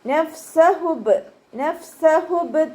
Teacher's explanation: ഹംസയുടെ സൗണ്ടായി പോവാൻ ചാൻസ് ഉണ്ട്, ശ്രദ്ധിക്കുക. ബ കൊൽക്കല ലെറ്റർ ആയതുകൊണ്ട് ഫുൾ സുക്കൂന് കൊടുക്കുക കേട്ടോ.